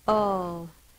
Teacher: It's not owl, it's ul. It's the schwa again